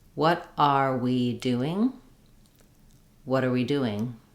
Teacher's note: when we link what and are it sounds like water water together with a pronoun we it sounds like water we